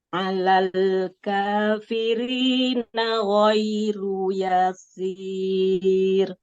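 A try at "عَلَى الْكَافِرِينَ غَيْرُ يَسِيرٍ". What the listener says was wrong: Cuman ya-nya jangan kepanjangan ya, coba. Ghairu yasir begitu.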